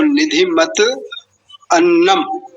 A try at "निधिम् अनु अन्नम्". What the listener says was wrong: निधि मत नहीं नहीं नहीं नहीं, वन्नम है, देखिए देखिए ये नहीं बनेगा। निधि मन वन्नम है, निधिम अनवन्नम, ये जो विग्रह होगा तो निधिम अनवन्नम, ठीक, निधिम अनु अन्नम ये हो सकता है।